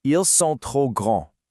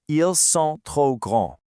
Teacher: The S in ils, the P in trop, and the DS in grand are all totally silent. All you actually hear is something like, ils sont trop grands. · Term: vanishing letters